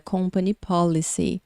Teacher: você vai pronunciar mais forte o começo da palavra policy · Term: tônica